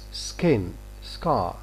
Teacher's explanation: Normally this k after s is not going to be aspirated. It's unaspirated here.